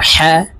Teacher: এই হা বড় হা হলকের মধ্যখান থেকে উচ্চারণ হবে, কারণ হার মাখরাজ হলকের মধ্যখান থেকে হবে।